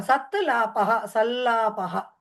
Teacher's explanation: కింద ల వత్తు కాదు ఆ ముందర సత్ తకారం సత్ లాపః సల్లాపః ఆ సల్లాపః ముక్కుతో పలకాలి ఆ ల అని పలికేటప్పుడు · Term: అనురూప లకారం